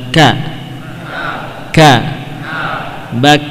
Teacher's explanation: tepatnya menyentuh pada pertengahan antara langit-langit yang lunak dan keras, ya. Itulah makhraj huruf kaf.